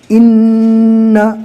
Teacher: تشدید کو پہلے والے حرف سے ملائیں گے، نون کو ڈبل پڑھیں گے، سختی کے ساتھ پڑھیں گے، اور نون پر تشدید آ گیا لہٰذا نون کا ایک الف کے برابر گنہ کر کے بھی پڑھنا ہے